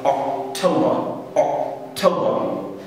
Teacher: in British English, we don't pronounce R, we keep that implied. So it would be really good if you don't pronounce R at the end of the word.